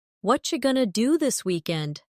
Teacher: Did you hear how what are you going to became what you gonna?